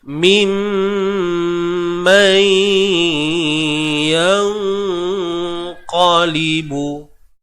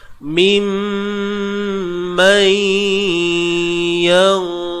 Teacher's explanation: nun mati bertemu qaf. Qaf ni bersifat tebal. Jadi dengung yang terhasil juga tebal. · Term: ikhfa haqiqi